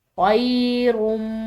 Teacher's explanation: خا کے بعد یا ساکن ہے تو ایک الف کی مقدار اس کو لمبا ادا کریں گے